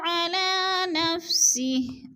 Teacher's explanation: کھڑی زبر کو بھی ہم نے کھینچ کر پڑھنا ہے، ایک الف دو حرکات کے برابر کیونکہ کھڑی زبر حروف مدہ کا قائم مقام ہوتی ہے اور یا لکھنے میں آتی ہے، پڑھنے میں نہیں آتی.